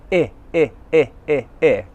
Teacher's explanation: The vowel sound is coming from the front of my mouth. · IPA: /ɪ/